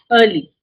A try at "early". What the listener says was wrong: Don't say the r very loudly. Early. R is very slow. But imagine that the r is very slight. Like imagine that we're not going to finish the r. We're going to just say early. Early.